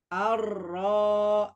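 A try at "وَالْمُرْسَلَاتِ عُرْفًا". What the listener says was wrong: Ro-nya jangan tanggung. Aro. Roro. Roro. Dorong lagi. Aro. Ruro. Urfa. Ur. Ur. Posisinya dia kayak gantung kalau sudah mengucapkan huruf ro. Ur. Urfa.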